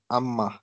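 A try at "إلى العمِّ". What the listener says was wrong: अम्मी शद्दा के नीचे हरकत है तो ये कसर।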